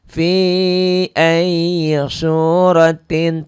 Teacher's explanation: tin jadi tim ya, masuk ke mim. Ini idgham bi gunnah karena kasratain ketemu mim.